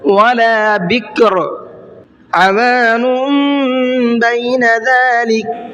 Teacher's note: عین کو حلق سے نکال کے پڑھنا ہے